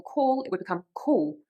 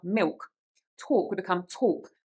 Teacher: Another thing about this accent is the use of the dark L in some words. So in, for example, call, it would become cool.